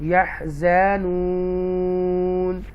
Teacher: اور یہاں پر، یہاں غور سے کریں، یہاں پر ہم نے مد عارض لگانی ہوگی، مد عارض مین آپ اس کو تھوڑا سا کھینچ کے پڑھیں گے اینڈ پر